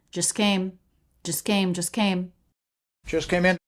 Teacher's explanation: the t is dropped because it comes between two consonants and that's really common